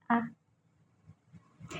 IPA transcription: ə